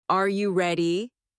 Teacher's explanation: when a native speaker asks a yes or no question like, Are you ready? the pitch of their voice goes up at the end.